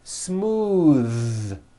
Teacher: another weather northern and now at the ends of words smooth believe it or not the th sound in smooth is voiced